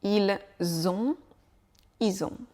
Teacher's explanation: on retient la liaison avec le S de il qui va s'attacher sur le mot on